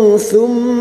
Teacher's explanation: mim yang bertasdid gunna musaddada kita dengungkan selama 3 harokat